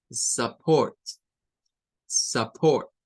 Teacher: en esta palabra se usa un schwa para esta vocal, U.